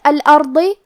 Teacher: کلمت الارض یہاں حرف الراء کا حکم ہے تفخیم کیونکہ اس پہ جزم ہے لیکن اس کے پہلے والے حرف پہ الف پہ زبر ہے، تو ہمیں حرف الراء کو موٹی آواز میں پڑھنا ہے